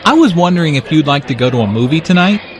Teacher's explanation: Notice how the question goes up at the end, which shows that he is not overly confident.